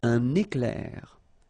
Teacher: I make this little liaison between the two.